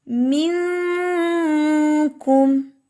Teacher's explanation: میں نے منکم نہیں پڑھا، نون کی آواز کو مکمل طور پہ چھپایا نہیں، بلکہ کاف کے ساتھ، یعنی کہ کاف کی وجہ سے نون کی آواز شو ہوئی ہے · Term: ادنا درجے کا اخفا